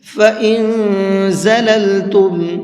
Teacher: نون کے اندر اخفا کر کے پڑھیں گے، یعنی ناک میں آواز کو روک کر کے پڑھیں گے، اس لیے کہ نون ساکن کے بعد میں زا ہے اور زا اخفا کے حرفوں میں سے ہے۔